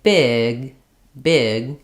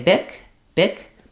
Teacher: One, if the difference between these is less about saying g and k with a strong voicing and more about when I say big, big, I'm not really letting that G out very much. I'm holding my vowel longer